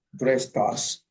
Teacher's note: Entonces, como lo que viene es una vocal, no puedes omitir la T. Lo que hacemos es poner esa T junto con la vocal que viene.